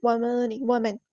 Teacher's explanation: وَمَنْ أَحْسَنُ نون ساکن پر اظہار ہوگا